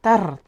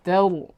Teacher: Huwal abtar. Ya, ra yang sukun sebelumnya fathah, maka kita baca ra tafkhim, maka dibaca tebal. Tidak kita baca seperti tadi tar tidak.